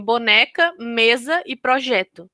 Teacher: elas são as palavras que apresentam a sílaba tônica na penúltima sílaba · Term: paroxítona